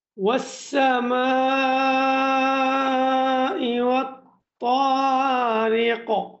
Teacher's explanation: ওয়াস-সামা ৪ আলিফ পরিমাণ লম্বা হবে। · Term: মধ্যে মুত্তাসিল